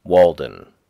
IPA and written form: ˈwɔːldən (Walden)